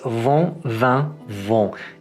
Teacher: instead of finishing the vowel like in English, you kind of hold it and let it hum in your nose